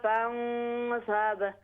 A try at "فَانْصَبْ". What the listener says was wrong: फंसब स्वाद को मोटा करके पढ़िए।